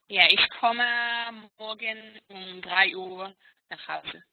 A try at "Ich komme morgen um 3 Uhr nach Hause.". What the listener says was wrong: Sehr gut.